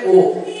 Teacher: আর এবার ঠোঁটটা একটু গোল হবে আস্তে আস্তে গোল হবে